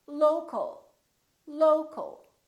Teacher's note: low low but we don't say low cal or low cal we reduce the second syllable and it becomes the uh · you see ol and al sound exactly the same because they're both reduced syllables